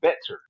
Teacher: In Houston, they pronounce their T. They say better.